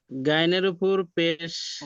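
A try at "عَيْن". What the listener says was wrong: গয়ন নয়।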